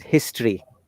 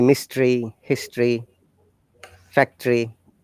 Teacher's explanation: you can see the o after t it is a schwa sound